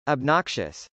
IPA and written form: ɑbnˈɑkʃəs (obnoxious)